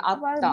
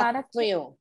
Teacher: ব্যঞ্জন বর্ণের নিচে ফলা হলে সেই উচ্চারণ, ব্যঞ্জন বর্ণের উচ্চারণ একটু সানুনাসিক হয়ে যায়, চন্দ্রবিন্দু দিয়ে বলতে হবে।